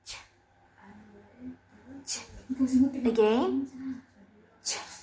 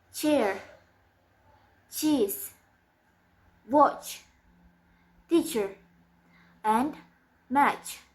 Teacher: And it's voiceless. The place of articulation is post-alveolar, and the manner of articulation is affricative.